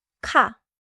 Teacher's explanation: the first sound has a clear puff